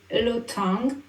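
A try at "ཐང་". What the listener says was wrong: Alors, c'est pas l'OTAN, c'est le tang.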